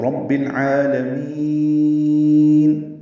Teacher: عین کو 2 حرکات لمبا کرنا ہے، وسط حلق سے اس کو بھی ادا کرنا ہے۔ لام کو جلدی پڑھنا ہے، میم کو لمبا کرنا ہے، تو رب العالمین، یہ مد عارض للسکون ہے یا مد وقفی ہے، یا ساکن کے بعد نون ساکن پہ اظہار ہوگا وقفاً۔